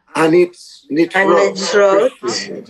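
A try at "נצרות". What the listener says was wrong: Be clear with the pronunciation. Notzrut. We don't see the O, but it's there. Notzrut.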